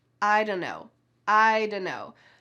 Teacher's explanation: The word dunno is not a word. It's just a smushing together of don't know. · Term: casual reduction